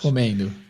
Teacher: existe uma ditongação quando vocês falam o ENDO nos verbos